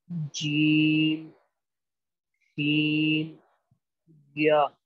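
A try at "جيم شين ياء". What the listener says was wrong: थोड़ा जीम और शीन को खींच के पढ़ना है। जीम, शीन, या, जीम और शीन को पांच हुरूफ की मकदार खींचना है, यानी एक जो हर्फ होता है ना, एक हर्फ जैसे अलिफ या जैसे मिसाल के तौर पर हा, ये एक हर्फ है।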